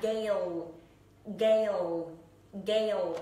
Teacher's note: các bạn cứ nhớ cho mình âm này là âm a, không phải là âm eo. Âm a kéo dài ra.